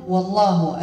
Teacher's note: اللام اسم الجلال مفخمة، لماذا؟ لأن مسبوقة بواو مفتوحة بفتحة